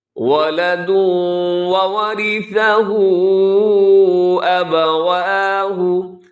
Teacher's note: وَلَدٌ میں بھی ادغام ہے، تنوین کے بعد واو